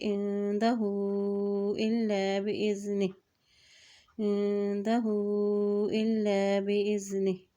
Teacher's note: ہا کے اوپر الٹا پیش بھی ہے اور مد بھی ہے، اس لیے اس کو لمبا ادا کریں گے